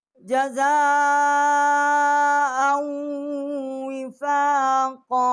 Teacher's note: آگے حمزہ ہے، بڑی مد ہے، 4 الف جتنا آواز بلند کی ہے، آگے حمزہ کو واو ہم نے حمزہ کو واو کے ساتھ مشدد کیا ہے اور یہاں ہم نے غنہ کیا ہے۔